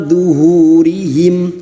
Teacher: diikuti oleh waw sukun, dua hitungan untuk mad thabi'i